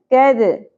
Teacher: دال ساکن میں قلقلہ ہوگا